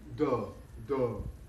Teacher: this D is a very thick D, it's a full mouth D. Actually, it's a kind of D that we say in American English when we're making fun of somebody and calling them dumb.